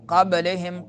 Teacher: قبلہم قلقلہ ہوگا با میں